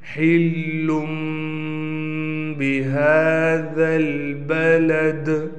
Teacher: ہا کو ہم نے بالکل حلق سے نکالنا ہے